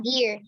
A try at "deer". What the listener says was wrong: Dear. Good. That's it. Itu dia.